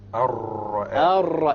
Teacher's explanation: The rolling of the ra. You repeat it.